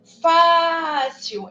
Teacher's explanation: Eu vou prolongar o fá. Então, o fá é a nossa sílaba tônica.